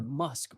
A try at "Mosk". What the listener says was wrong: His name is Mosk, not Musk. It's with an O, not you.